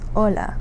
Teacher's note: usually the H in Spanish doesn't actually have a sound